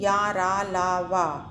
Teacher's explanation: वा का उच्चारण स्थान है दंत्योष्ठ, क्योंकि इसमें दांतों का भी प्रयोग हो रहा है और ओष्ठ का भी प्रयोग हो रहा है। तो वा व्यंजन का उच्चारण स्थान ऑप्शन डी दंत्योष्ठ।